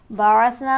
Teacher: بعثنا میں نون کو ہم کھینچیں گے ایک الف کے برابر کھڑی حرکت کی وجہ سے